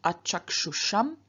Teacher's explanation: In front of this am, which begins with a vowel, us changes into ush, and so we have achakshusham.